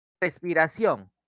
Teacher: En la palabra respiración, cuando nosotros la silabiamos, nos damos cuenta que en ción está recayendo la mayor intensidad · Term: sílaba tónica